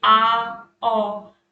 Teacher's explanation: अर्ध विवृत में क्या है आपका, इसमें मुंह कुछ अधिक आपका खुलेगा, जैसे कि आ, ओ।